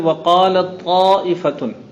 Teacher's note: تا اور طا متحد المخرج ہے، لیکن ظاہر بات ہے کہ تا میں صفت ہمس، طا میں جہر، تا میں استفال، قا میں استعلا، تا میں انفتاح، قا میں اطباق، قا میں قلقلہ، جو تا میں نہیں ہے مختلف الصفت. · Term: متحد المخرج مختلف الصفت